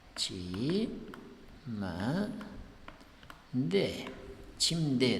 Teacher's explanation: Sababi qoida bo'yicha m harfidan keyin kelsa, t harfimiz d deb talaffuz qilinadi. D. Shuning uchun bu yerda chimde deb talaffuz qilinyapti.